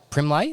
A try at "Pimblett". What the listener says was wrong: No, Paddy Pimblett. No, there's no R. P-I-M-B-L-E-T-T.